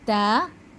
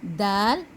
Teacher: हरूफ ता के लिए ज़बान की नोक दांतों की जड़ पर नरमी से लगती है, और हरूफ दाल के लिए सख्ती से लगती है, और दोनों हरूफ के लिए ज़बान का बाकी हिस्सा नीचे ही रहता है, यानी ऊपर तालू की तरफ नहीं उठता, जिससे उन हरूफों की आवाज़ पतली होती है।